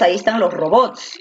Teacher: la fuerza de voz está en bots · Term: aguda